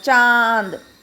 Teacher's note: नाक और मुंह दोनों से साउंड आ रही है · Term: अनुनासिक